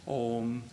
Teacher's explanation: ah and ooh becomes the diphthong o